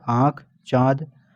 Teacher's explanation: अनुनासिक क्या होता है, स्वर होते हैं, अनुनासिक स्वर होते हैं और उच्चारण नाक और मुंह दोनों से होता है